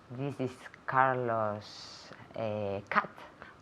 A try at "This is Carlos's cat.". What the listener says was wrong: Carlos's. So aquí Carlos, bueno, el nombre ya termina en S. Cuando termina en S el nombre, hay que añadir otra sílaba. Carlos's. Carlos's cat.